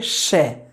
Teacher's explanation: जो हमारी प्राण वायु मुख से बाहर निकलती है वह संघर्ष करते हुए और घर्षण करते हुए बाहर निकलती है